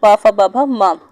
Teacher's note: उसके बाद ओष्ठ से जो निकलता है वो निकलता है पा फा बा भा मा, यानी जब हम पा फा बा भा मा वाली लाइन बोलते हैं तो ओठ जो होते हैं वो टच होते हैं आपस में।